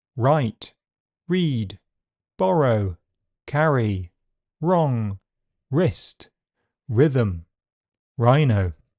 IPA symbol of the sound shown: ɹ